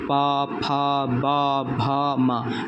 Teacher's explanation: तो ये जो 5 अक्षर हैं, जो व्यंजन हैं, ये पांचों बोलने में हमारे जो ओठ हैं वो टच होते हैं।